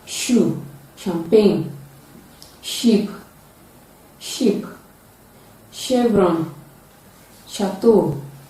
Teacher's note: It is a voiceless palato-alveolar fricative sound. It can be realized at the initial, middle, and final positions of English words.